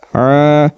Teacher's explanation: کرنا ہے کیونکہ عین کے بعد الف ا رہا ہے تو عین کے اوپر جو زبر ہے اس کو ایک الف کے برابر کھینچ کر پڑھیں گے